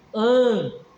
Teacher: Então, porque nesse caso aqui, o an está tendo som, o N não está fazendo uma função de ne, o N está fazendo uma função de nasalizar o som do A. An, entende?